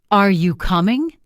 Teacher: Voice rises at the end. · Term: intonation